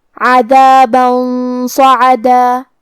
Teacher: کلمت عذابن کے آخری میں با پہ تنوین زبر ہے، پھر حرف الصاد ہے کلمت صعدہ، صاد حروف الاخفاء میں سے ہے تو ہم یہ حکم کو غنہ کے ساتھ ادا کریں گے، اور کیونکہ صاد حروف تفخیم میں سے بھی ہے تو ہمیں یہ غنہ کو تفخیم سے مطلب بھاری آواز میں ادا کرنا ہے